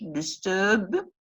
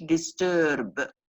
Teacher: And then we have between 2 slashes, between 2 strokes, we have first the pronunciation in British English, disturb, and then we have the pronunciation in American English, disturb. Notice that R is being pronounced before a consonant in American English.